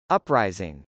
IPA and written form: əprˈaɪzɪŋ (uprising)